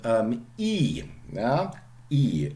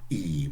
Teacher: We call this an extreme vowel, front, high, and long. It only exists as a long vowel, okay?